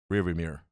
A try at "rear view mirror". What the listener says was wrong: No, he's got the other R in there. Yeah, mirror. Mirror.